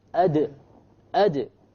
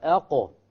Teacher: The qalqala basically is caused by the release of the sound after it was trapped because of the sukoon.